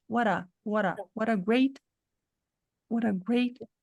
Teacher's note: nesta junção a gente vai reduzir o t para um som mais simples que para nós em português é um R